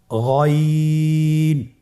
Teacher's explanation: হারাফটি উচ্চারিত হয় কন্ঠনালীর শেষ ভাগ হতে